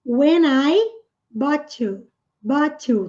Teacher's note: aqui nós temos um N e depois nós temos uma vogal. Então, naturalmente, o som vai se unir.